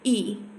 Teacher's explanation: तालव्य जो दीर्घ है, अग्र है, संवृत है, अवृत मुखी है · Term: बड़ी ई